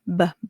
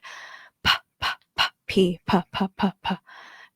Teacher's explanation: So when you say B and P, if you put your palms on your ears and say BBB, you're going to hear the buzz in your ear. BB, that's a voice sound.